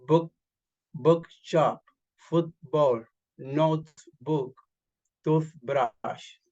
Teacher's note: In compound nouns, two words merged into one, the stress is on the first part.